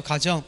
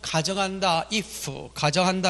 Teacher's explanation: 집안의 홈이라는 의미의 가정은 짧게 내지만 가정한다, if 가정한다 할 때는 길게 낸다는 사실을 보여주고 있습니다.